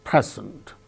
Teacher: Present, the first syllable gains stress, present.